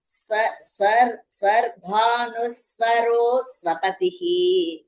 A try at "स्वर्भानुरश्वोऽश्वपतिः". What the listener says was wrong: You are saying swapati. Swa no shakara it should come. Swarbhanurashvoshva. Both ashvoshva. Then both shakara should come.